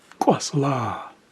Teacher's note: So this is the same as the Q with the raised W, but it's going to involve us closing our vocal cords. It's a glottal stop.